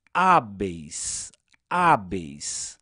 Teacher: E decrescente, porque das duas vogais presentes nesse ditongo, a vogal E é mais forte que o I. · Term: ditongo decrescente